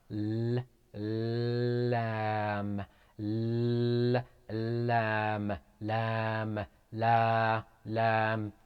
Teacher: it is pronounced from the tip of the tongue when it hits the gums and the upper incisors